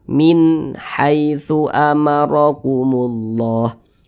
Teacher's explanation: Maka nun sukun berjumpa dengan huruf H hukumnya izhar halqi. Karena dia izhar maka dibaca jelas, tidak berdengung. Jadi nun sukunnya kita baca jelas.